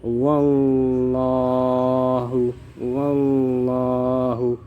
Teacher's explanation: Contoh bacaan tafkhim yang pertama, kita baca wallahu wallahu. Lafal Allah di sini berada setelah huruf yang bertanda baca fathah, maka dibaca tebal.